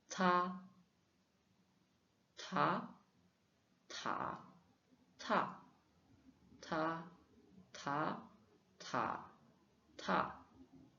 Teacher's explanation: Le t, c'est en chinois, c'est une consonne comme un T en français, mais avec un souffle plus marqué. Et on prononce avec un petit souffle et c'est délicat. Ça se fait te, te, te.